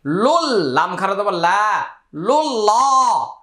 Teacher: লাম লাম পেশ লুল লাম খারা জবর লা লুল্লাহ এখানে জজম এবং তাশদিদের ডানে হরকত ছাড়া হরফ পড়া যায় না সে হিসেবে এই দুটি হরফ বাদ বাতিল এগুলো পড়তে হবে না কিন্তু আল্লাহ শব্দের পূর্বে পেশ আসছে তাই উচ্চারণটা লামটা মোটা হবে